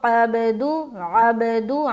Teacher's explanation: عین بھی نکالنا، با میں قلقلہ بھی کرنا اور دال کو پھر پڑھنا